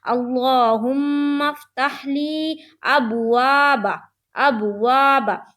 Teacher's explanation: تو دیکھیے الف خالی ہے اور اس کے پہلے جو حرف ہے یعنی کہ واو، اس کے اوپر زبر ہے، اور الف خالی سے پہلے وہ کوئی سا بھی حرف ہو اس کے اوپر زبر ہو تو وہاں پر الف مدہ کا قاعدہ بنے گا اور اسے ایک الف کے برابر کھینچ کر پڑھیں گے۔ لہٰذا ہم لوگ یہاں پر کھینچ رہے ہیں۔